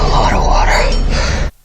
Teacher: So whenever you have off in your phrase and the next word starts with a consonant, there is a big chance that a native speaker would replace of with a